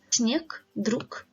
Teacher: V at the end of the word is pronounced as F sound, zryv, gniew. G at the end of the word is pronounced as K